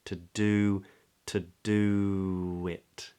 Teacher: we get this wonderful thing called an intrusive W and where the lips round to do and then because the next word begins with a vowel to do wit we release the lips